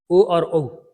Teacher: कंठ ओष्ठ से ओ और औ बोले जाते हैं